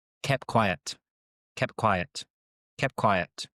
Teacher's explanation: We often drop this first T.